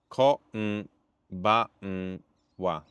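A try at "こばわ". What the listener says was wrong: You're doing English N, that's why. Their N is in the back of the mouth.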